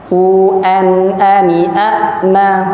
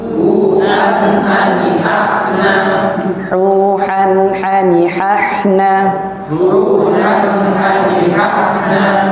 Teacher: nun sukun ketemu huruf-huruf yang tadi ha, ain, ha, ghain, kha, itu dibaca jelas, jelas. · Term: idhar